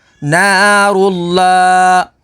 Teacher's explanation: اس میں جلالت اللہ عز و جل کے لام کو پر یعنی موٹا پڑھیں گے، اور لام کے اوپر تشدید ہے تو تشدید والے حرف کو 2 دفعہ پڑھیں گے۔